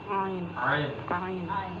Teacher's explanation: Ini sama, ini keluarga juga nih dengan hamzah. Ya, termasuk huruf dengan makhraj di halq, di tenggorokan. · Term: huruf ain